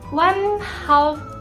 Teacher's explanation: di situ ada nun sukun bertemu ha, dibaca jelas, termasuk bacaan idhar.